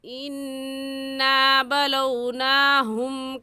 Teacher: اِنَّا میں نون مشدد ہے اور نون مشدد پر ہمیشہ غنہ ہوتا ہے اس لیے غنہ کریں گے